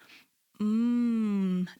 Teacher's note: m is actually a nasally sound so when I say m if I was to plug my nose it's really really hard to say that sound